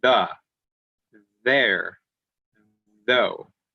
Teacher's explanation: When you say that, the, you can feel your throat vibrate a little bit. You can feel it moving. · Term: voiced